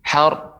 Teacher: pengucapannya untuk ra yang tafkhim ditebalkan tidak terlalu pendek. Sar, har, ya, tapi dia har, ada juga terdengar ra ya, akan tapi dia lebih tebal dan tidak terus singkat.